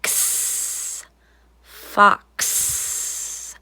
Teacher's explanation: X is almost made up of two sounds. K, s, together.